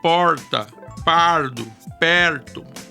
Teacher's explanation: R retroflexo dos paulistas, que alguns chamam de caipira, tão comum no interior do estado.